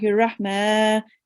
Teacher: Okay, when you recite tasmiyah, okay, when you say Bismillahir Rahman, okay, so make sure to make the ma a bit longer